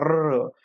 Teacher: जीवेचं याठिकाणी दोन-तीन वेळा असं पहा कंपन होतं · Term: प्रकल्पित